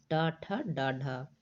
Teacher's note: हिंदी की मूर्धन्य ध्वनियां जो है वो ट ठ ड और ढ है